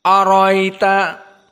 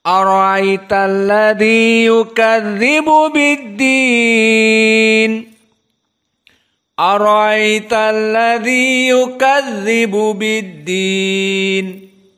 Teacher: disebutkan hamzah namun tidak terlalu dalam makhrajnya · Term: tashilil hamzah